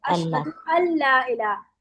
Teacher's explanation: नून लाम में मर्ज हो जाता है और नून बिल्कुल नहीं पढ़ा जाता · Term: इदगाम